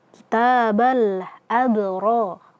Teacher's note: Kitabal abro. Ro kita baca tebal karena dia fathah dan setelahnya ada alif. Maka di sini mad thabi'i kita baca dua harakat.